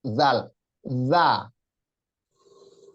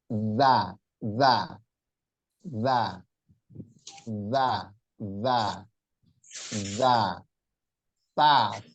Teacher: Makhrajnya jangan sampai pindah atau berubah jadi huruf huruf zal jadi zai. Zal di ujung lidah digigit sedikit, za.